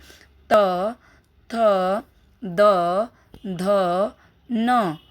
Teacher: हमारी जिह्वा जो है, हमारी जीभ जो है दांत को टच कर रही है, इसलिए यहाँ पर डेंटल हुआ।